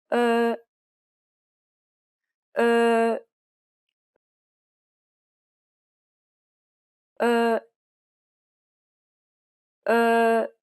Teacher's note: This sound doesn't exist in English, but it's very similar to the U in the word fur. Be sure to compress your lips.